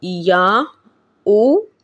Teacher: یہاں پر مد منفصل کا قاعدہ ہو رہا ہے، کیونکہ قاعدہ ہے کہ حرف مدہ کے بعد حمزہ دوسرے کلمے میں ہو، تو یہاں پہ یا ایک کلمہ ہے اور حمزہ سے دوسرا کلمہ شروع ہو رہا ہے۔ قاعدہ مد منفصل کا ہوا، یہاں پہ 2.5 الف کی مقدار تک کھینچ کر پڑھیں گے